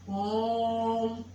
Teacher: जिस स्वर में उच्चारण में तिगुना समय लगता है उसे क्या बोलते हैं? प्लुत स्वर।